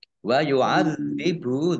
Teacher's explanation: dzalnya dibaca double ada tasdidnya